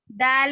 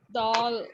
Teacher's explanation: दौल नहीं पढ़ेंगे, दाल बारीक पढ़ना है, दौल मोटा हो जाता ना, दाल पढ़ेंगे, हाँ।